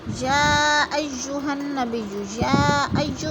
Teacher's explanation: مد متصل ہے، 4 الفی مد ہے، ہم نے اس کو 4 الف کے برابر کھینچ کر پڑھنا ہے